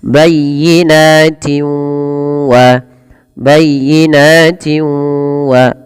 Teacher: cara membacanya memasukkan suara tanwinnya kepada huruf wau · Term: idgham bighunah